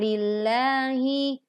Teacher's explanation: Kata Allah didahului oleh Kasra, sehingga dibaca tipis. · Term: Tarqiq